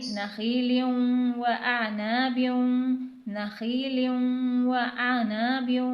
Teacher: یہاں پر دو زیر کی تنوین کے بعد واو آ رہا ہے، حروف یرملون میں سے ہے، تو یہاں پر بھی ادغام کے ساتھ غنہ کیا جائے گا، یعنی نخیل و اعناب، نخیل و اعناب۔